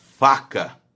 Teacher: o lábio inferior encosta o dente superior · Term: lábio dental